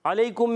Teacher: علیکم میں عین پر زبر ہے، حرکتیں نہیں کھینچیں گے، عین حلق کے درمیان والے حصے سے